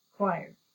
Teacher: do you hear the schwa sound in the first syllable